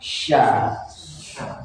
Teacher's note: kalau yang syin ini itu lidah yang bagian tengah ya kayak huruf jim kemarin ya kan itu nempel di langit-langit